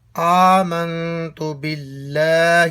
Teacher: آمنتو کا جب آغاز کریں تو کھڑی زبر کو کھینچے